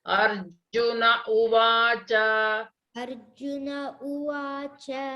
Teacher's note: you should not elongate nakara or cha